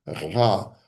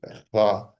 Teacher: They have a soft ayin, ah, and they have a hard ayin, ra, which sounds almost like a G, like a soft G, ra, in the back of the throat